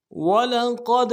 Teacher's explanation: واو کو نرم سے ادا کرنا ہے, لام کو نرم سے ادا کریں گے, قوف کو موٹا کریں گے, دال کے ساتھ ملانا ہے.